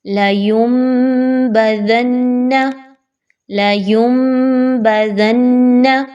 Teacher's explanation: اب نون کے اوپر ہم نے زور دیا اور ہم نے اقلاب کے قاعدے کے اوپر جو ہے وہ آواز ناک میں لے کے گئے